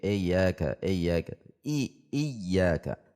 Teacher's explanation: Di sini ada alif kasrah sebagaimana kaidah sebelumnya, setiap harakat harus dibaca dengan baik. Tidak dibaca e tetapi i. Dibaca i tidak e.